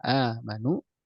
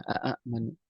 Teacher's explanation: hamzah yang keduanya dihilangkan, dimasukkan ke dalam hamzah yang pertama, kemudian dipanjangkan hingga terjadilah perubahan menjadi mad badal